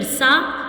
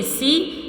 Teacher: جب ہم سین ادا کریں گے تو سٹی کی سی آواز آئے گی